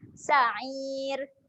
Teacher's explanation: Kita akan bacakan ra ni dengan ra yang nipis.